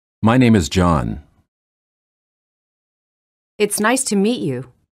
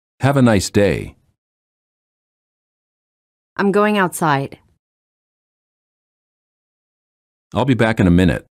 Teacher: falling intonation lower your voice at the end of the sentence falling intonation is used in statements sentences that are not questions